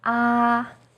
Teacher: first tone is high and steady